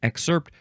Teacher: maybe you emphasize the second syllable more often